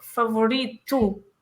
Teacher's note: at the end of the word, when there is an O, we say U.